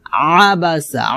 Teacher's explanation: আইনটা খলকে মাঝখান থেকে চাপ দিয়ে উচ্চারণ করতে হবে